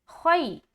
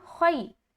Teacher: جب ہم خا یا زبر خی یا لین کریں گے خا موٹا ادا ہوگا